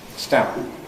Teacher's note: So during the ‘hold (phase)’, we have no voicing. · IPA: [stæ̃mp]